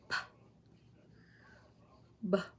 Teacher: the air flow is completely obstructed by the lips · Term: stops, stop